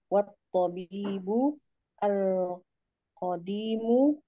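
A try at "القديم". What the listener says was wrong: Ul qadimu. Langsung diwasal, tidak usah diputus-putus.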